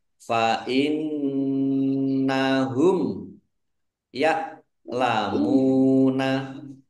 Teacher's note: Nun tasdid bacaan gunnah dibaca mendengung, ditahan 2 harokat biar tampak dengungannya.